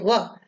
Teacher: जब हम व का उच्चारण करते हैं तो जिह्वा दांत को भी स्पर्श करती है और ओष्ठ में भी हरकत होती है वह, इसलिए इसके उच्चारण स्थान दोनों हैं। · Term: दंत और ओष्ठ